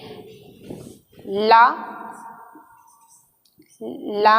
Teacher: ला को पार्श्विक व्यंजन दंत मूल और वतसर व्यंजन कहते हैं